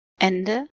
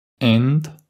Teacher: En allemand, il y a beaucoup de mots qui se terminent par E. En bavarois, il disparaît très souvent.